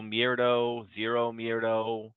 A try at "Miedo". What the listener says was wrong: It says Miedo, right? Not Mierdo. There's an R.